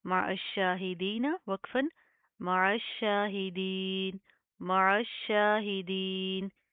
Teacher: شین کے اوپر شد آ رہی ہے اس کو سختی سے مضبوطی سے جما کر پڑھیں گے